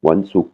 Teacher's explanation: intonation qui tombe sur la dernière syllabe et une voyelle courte hein qui est le ou